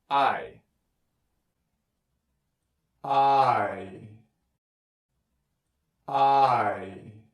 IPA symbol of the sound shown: aɪ